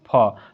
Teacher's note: फ का उच्चारण स्थान आपका ओष्ठ होगा।